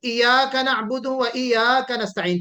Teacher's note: यहाँ पे जो तशदीद है या के ऊपर, इसका वाज़ेह और क्लियर हमें पढ़ना चाहिए, तशदीद को सही प्रोनाउंस करना चाहिए।